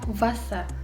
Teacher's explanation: W-nya tuh jadi bibir bawah kalian nyentuh ke gigi atasnya sini.